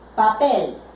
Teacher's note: Tiene la última sílaba más fuerte, o sea, es una aguda.